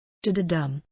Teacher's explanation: The beat is dum-da-da, anapost, unstressed, unstressed, stressed